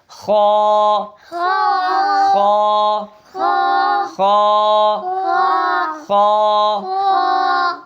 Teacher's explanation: کھول کے اور ادھر سے ادنی حلق سے ادا کرنا ہے، خا اس کو موٹا ادا کرنا ہے، ٹھیک ہے؟ اور اس کے ساتھ جو الف پڑھ رہے ہیں ہم، اس کو بھی موٹا پڑھنا ہے